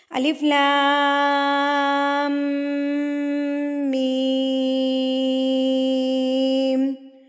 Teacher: point آپ note کر لیجئے کہ یہ مد جو ہے تشدید کے بغیر والی اس کو 4 حرکات کے برابر اور تشدید کے ساتھ مد جو ہے وہ 6 حرکات کے برابر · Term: مد لازم